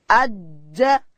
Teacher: جیم ادا کیږي د ژبې منځ به لوړ تالو ته وروړو